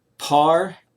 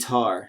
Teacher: they're exactly the same except we have that different initial sound in par the initial sound is the aspirated p and in tar the initial sound is the aspirated t